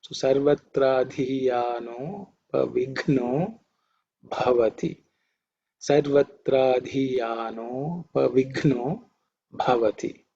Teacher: Vighna is the gha, which is the fourth in the ka varga, has to be aspirated, and bha. Those three letters are Mahaprana or aspirated letters.